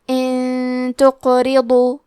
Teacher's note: تا حروف الاخفاء میں سے ہے تو ہم یہ حکم کو غنہ کے ساتھ ادا کریں گے